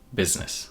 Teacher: The first part sounds like busy, up to the z, biz. The second syllable starts with the nasal sound, n, and ends with a s, which is voiceless. The vowel in the second syllable is typically the same one as in the first syllable, I.